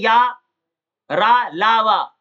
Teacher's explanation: तालु है, दांत है, होंठ है, इनके निकट तो हवा तो आती है लेकिन इनको टच नहीं करती, इनको अंतस्थ व्यंजन कहते हैं।